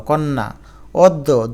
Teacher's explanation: যেমন কন্যা এখানে ন এর সাথে জফলা থাকা সত্ত্বেও ন দুইবার হয়ে গেল